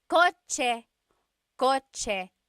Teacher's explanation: The ch sound is a TS combination.